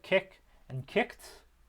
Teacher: It has basically an agreement with the end of each of the words it attaches to match it in voicing. So with kick, we have a voiceless velar stop at the end. So the duh becomes a tuh in kicked. So it becomes voiceless.